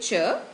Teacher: So when you say ch, the tongue has to touch the palate briefly. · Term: talu dhwani